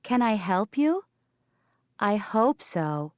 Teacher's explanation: the H is not dropped because it is in a stressed word